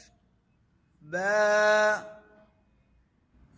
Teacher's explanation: انتہا میں خیال کرنا ہے جھٹکا پیدا نہ ہو، اور یعنی جھٹکے سے مراد یہی ہے حمزہ پیدا نہ ہو، ہا کی آواز نہ آئے، اور با کیونکہ با کے آخر میں جو حرف ہے وہ الف ہے، الف مدہ ہے، اور اس کا جو مخرج ہے وہ جوف دہن ہے، منہ کا خالی حصہ، یعنی اس کی آواز منہ کے باہر آئے گی.